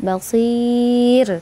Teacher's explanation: Basir itu mad arid sukun dengan baca rohnya tipis